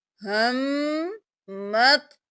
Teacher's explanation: میم پر تشدید ہے، پہلے میم پر غنہ کریں گے. میم کو 2 بار پڑھیں گے، ہا زبر میم ہم، اور پھر میم کو زبر کے ساتھ قو کے ساتھ ملائیں گے.